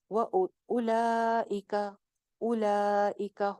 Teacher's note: दो अलिफ लंबी हो जाएगी, चार हरकत या दो अलिफ